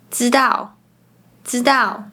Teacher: “zh ch sh” are pronounced like “z c s” This is similar to other southern Chinese accents. When speaking, people usually don't curl their tongues as much as Northerners do in China.